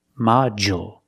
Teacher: on the first syllable so the second syllable is short and we see the D makes the J sound like juice and jump module d u in the middle of the word usually makes